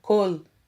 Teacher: o Kametz tem por som a vogal O e não AU, como alguns afirmam, testificando mais uma vez que sinais massoréticos ou vocálicos sinalizam o som de apenas uma vogal.